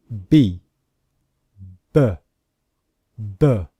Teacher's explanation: in the voiced consonants example the letter B the sound also comes from the voice from the vocal cords in the throat